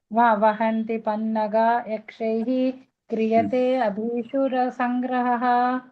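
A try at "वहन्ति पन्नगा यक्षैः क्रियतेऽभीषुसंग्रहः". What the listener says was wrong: క్రియతే అభీషు, ఇందాక క్రియతే భీషు సంగ్రహ అన్నట్లు వినపడింది నాకు. అభీషు అంటే పగ్గాలు అన్నమాట, పగ్గాలు. క్రియతే అభీషు సంగ్రహ అంటే పట్టుకోవడం.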